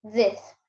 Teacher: The tip of the tongue comes out of the mouth slightly but with vibration. It presses against the edge of the upper front teeth. Slight escape of air, as in this, not a Z sound.